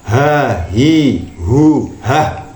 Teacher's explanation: pangkal tenggorokan ya atau tenggorokan bagian bawah juga menjadi ee makhraj hurufnya ha